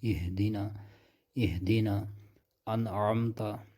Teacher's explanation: اب ہا کو جب آپ گلے کے نیچے حصے سے آپ ادا کریں گے تو ایک وہاں پر وائبریٹ سی ہونے لگتی ہے، وائبریشن پیدا ہو جاتی ہے جب اس کو اپنے مخرج سے آپ ادا کریں گے.